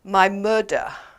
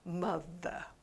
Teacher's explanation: another pronunciation problem is the th sound which often is pronounced as a d sound